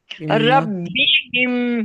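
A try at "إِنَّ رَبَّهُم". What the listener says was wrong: रब्बी क्यों? रब, बी कहाँ है?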